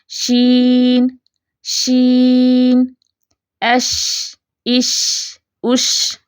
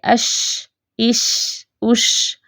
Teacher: شین کی آواز چلتی ہوئی محسوس ہوتی ہے. چلتی ہوئی جو آواز محسوس ہو نا وہ نرم آواز ہوتی ہے.